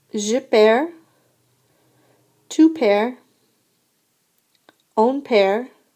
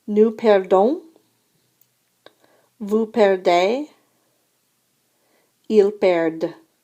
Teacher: we don't hear the D's, okay, in the singular forms, but in the plural forms we do.